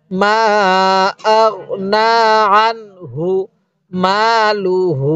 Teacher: অনেক এটা বানান করার সময় আমরা নুন ইয়া খারা জবর না পড়ব, আর উচ্চারণের সময় শুধু না উচ্চারণ হবে, কারণ উচ্চারণের সময় ইয়াটা বাদ যাবে